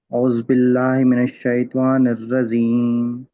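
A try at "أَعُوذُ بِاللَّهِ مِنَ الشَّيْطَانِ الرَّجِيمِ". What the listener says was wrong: నిర్రజీం, జీం రావాలి. నిర్రజీం, జీం.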